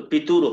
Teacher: तो ये पितुह शब्द है और पितुह में जो विसर्ग है इसको र यहाँ हो गया है तो पितुर हो गया है